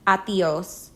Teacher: teach your friends to say it in two syllables with the stress on the second one · in two syllables with the stress on the second one atios since the D comes between two vowels it's pronounced like the th in brother